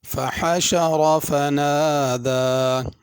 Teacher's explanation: حشر میں بڑی حا ہے، اور را بھی پر پڑھنی ہے۔